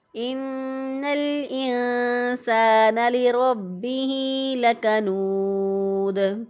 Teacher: अब यहाँ पे रा को मोटा पढ़ेंगे लेकिन होंठों को गोल नहीं करेंगे।